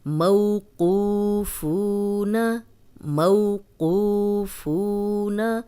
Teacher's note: جزم والی واو پیچھے پیش، جزم والی واو پیچھے پیش، دونوں لمبے کرنے ہیں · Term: واو مدہ